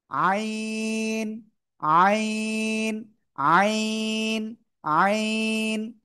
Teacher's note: কোন জায়গা থেকে উচ্চারণ হয় জানেন? এই গলার মধ্যখান, গলাটা চেপে মুখ দিয়ে কোনো বাতাস বের হবে না